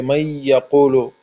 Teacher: یہ یا پہ شد ہو گیا، نون اور یا آپس میں مل گئے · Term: ادغام